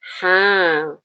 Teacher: dia dibaca dengan mad thobi'i ya. Lebih panjang dua harakat.